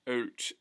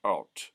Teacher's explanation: the ow sound becomes something more like an O rather than an oo